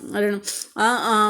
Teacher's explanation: அ ஆ வந்து வாய் திறத்தலாகிய முயற்சியால் பிறக்கின்றன